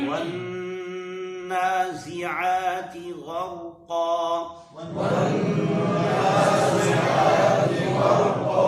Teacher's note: نون پر غنہ کریں گے، زا کو شدت کے ساتھ ادا کریں گے، عین کو پر ادا کریں گے۔